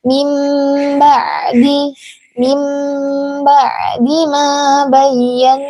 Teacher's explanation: Min ba'di adalah iklab ya, karena nun sukun yang bertemu huruf ba. Nah, dan huruf ba-nya itu diganti dengan huruf mim.